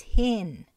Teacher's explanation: the stress on the first eye nissan on pronunciation is hin the last vowel is just not there